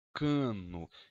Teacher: Cano, eu ouço um som an. Esse som an é um ressô nasal.